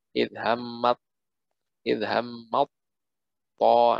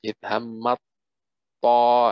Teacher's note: Yang pertama, yang kedua tak juga ketemu to yaitu idhammat taifatan. Jadi taknya melebur ke to.